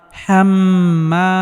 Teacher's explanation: এখানে মিমের উপর তাসদিদ থাকার কারণে মিমকে গুন্নাহ করে পড়তে হবে কারণ নুনে বা মিমে তাসদিদ হইলে গুন্নাহ করে পড়তে হয় হাম্মা